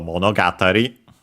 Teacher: Monogatari is a compound word accented on ga, so monogatari, is actually a compound word because it literally is from mono.